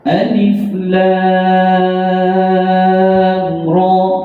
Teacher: Lam baca dengan 6, ra dibaca dengan 2.